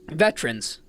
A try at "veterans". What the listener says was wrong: So you lose that middle ER. Veterans.